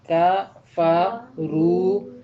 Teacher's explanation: کا فا رو کا فا آدھی آدھی آوازیں اور رو پوری آواز ہے